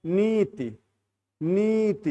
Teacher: नी को बड़ा बोलेगा ती को छोटा बोलेगा